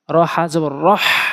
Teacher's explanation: হলকের মাঝখান থেকে হা উচ্চারণ করতে হাতের তালু যখন মুখে রাখবেন তখন গরম বাতাস অনুভব হবে